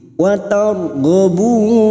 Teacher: Watar ro sukun yang sebelumnya fathah kita baca tafkim.